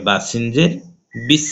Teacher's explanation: সিন হচ্ছে হামসের হরফ, বাতাস বের হবে। বা সিনের সাথে মিলাইতে হবে বা সিনজের বিস।